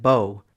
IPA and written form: boʊ (bow)